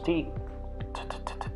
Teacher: So when the tip of the tongue touches the alveoli, we produce sounds such as T. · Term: T sound